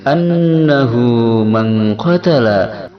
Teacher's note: an nun bertasydid hukumnya gunnah asli, berdengung 2 harakat pada hidung